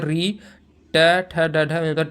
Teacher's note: यानी ट मूर्धा से बोला जाता है